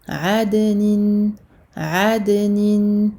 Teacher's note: dal qui fait partie des lettres de la qalqala pour lesquelles on va faire rebondir en fait la lettre lorsqu'elle porte un soukoun.